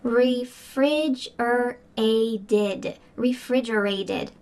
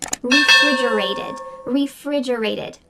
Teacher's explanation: That final t is going to sound like a d in American English because it's surrounded by vowels.